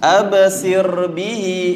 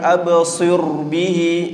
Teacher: الصاد tu bila bertemu dengan ra, ra tu mati. Kemudian sebelumnya berbaris bawah, maka bacaan ra tu jadi tarqiq, dia jadi nipis.